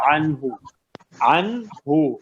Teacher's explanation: نون کو مخرج سے پڑھیں گے، بالکل غنہ نہیں کریں گے. کوئی اگر ایسے پڑھے عنہ تو غلط. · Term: اظہار